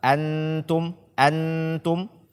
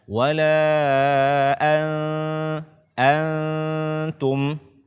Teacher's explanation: kita melengketkan ujung lidah kita di gusi atas kita sehingga dia akan menjadi izhar